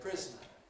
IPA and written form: ˈprɪz.nə (prisoner)